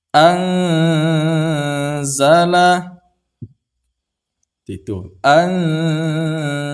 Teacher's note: Sewaktu kita menyamarkan dan menahankan anzala ini, kita sudah bersiap-siap untuk menyebutkan huruf zai. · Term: ikhfa